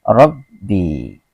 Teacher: Ditasdikkan dengan huruf ba yang di depannya, maka dibaca Rabbi, ditekan